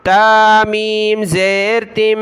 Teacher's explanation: تا کو میم کے ساتھ ملانا ہے، میم کو واو کے ساتھ، یہاں غنہ کریں گے